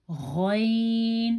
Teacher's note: غین، تھوڑی سی خرخراہٹ ہوتی ہے گلے میں تو غین ادا ہوتا ہے